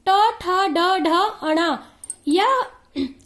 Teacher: इसका उच्चारण करते समय हमारा जीभ मूर्धा से टकराता है, इसलिए इसे मूर्धन्य ध्वनि या मूर्धा ध्वनि कहा जाता है